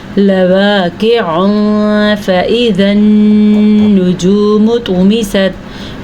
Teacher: اخفا ہوگا کیونکہ تنوین کے بعد فا حروف اخفا میں سے آیا ہوا ہے